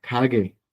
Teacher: Entonces, suenan como consonantes fuertes. La primera consonante, cuando está el principio de la palabra se pronuncia como una k. Cuando la tenemos en medio al final de la palabra se pronuncia como una ga, ga.